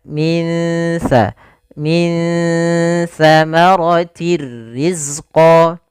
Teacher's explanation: Ikhfa yaitu ditandai dengan nun sukun bertemu dengan huruf tsa yaitu cara membacanya samarkan nunnya kepada makhraj daripada huruf tsa · samarkan nunnya kepada makhraj daripada huruf tha. Makhraj tha adalah ujung lidah menempel dengan gigi sari kita. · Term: bacaan ikhfa